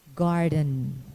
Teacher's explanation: When occurring too in a final unstressed syllable, the n is a syllabic consonant